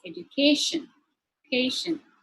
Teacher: the stress shifts to the third syllable